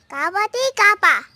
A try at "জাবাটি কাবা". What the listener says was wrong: কাবাটি কাবা না, জাবাটি কাবা।